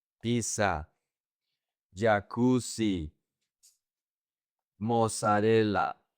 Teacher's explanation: Most people say jacuzzi. So, people in Spanish pronounce the double Z like an S.